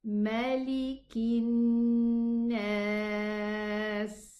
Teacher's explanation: Hamzatul wasli, as we always mention, when we are connecting, we are going to drop pronouncing it, and the lam also in this word is going to be dropped.